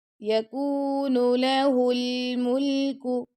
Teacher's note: لام جو ہے نا ساکن ہے، تو یہ آپ نے کلکلا نہیں کرنا اس پہ۔ اگر آپ اس کو پڑھ دیتے ہیں ہل ملکو تو یہ رونگ ہو جائے گا۔